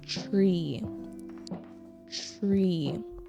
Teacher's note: put the R in there with the ch sound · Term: tr sound